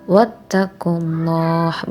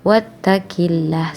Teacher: Nah, di sini ada lafaz Allah, hukum bacaan tafhim, sebab sebelum lafaz Allah didahului dengan harokat dhammah. Tafhim artinya tebal, maka yang benar adalah wattaqullah, bukan wattaqillah, salah.